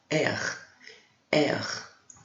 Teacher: O R em francês ele tem que ser bem pronunciado, então ele é na garganta, ça va? A gente arrasta ele um pouquinho, né?